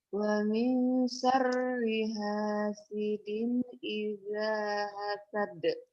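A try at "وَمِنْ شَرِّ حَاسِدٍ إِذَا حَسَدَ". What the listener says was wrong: Ini shinnya digedein, hanya dikeluarin. Wa min syarri tuh. Wa min syarri hasidin idza hasad.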